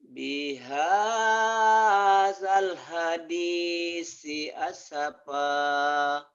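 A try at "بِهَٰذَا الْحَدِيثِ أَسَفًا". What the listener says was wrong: jangan as-sapa, jangan asafa. Kalau as-sapa berarti ada pendobel, ya. Bihadzal hadithi asafa,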